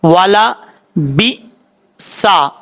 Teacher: با کے بعد حمزہ ساکن ہے، اس کو جھٹکے کے ساتھ پڑھنا ہے